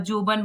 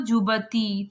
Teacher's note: या का उच्चारण प्राय जा होता था